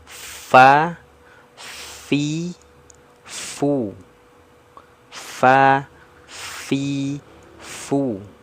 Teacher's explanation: gigi seri atas sentuh di perut bibir bawah